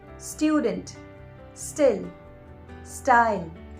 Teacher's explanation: the word starting with S followed by a consonant should not have an extra syllable in the starting